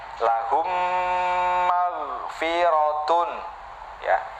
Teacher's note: Di situ ada dengungnya. Dengungnya itu keluarnya dari khoisyum. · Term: idgham mimi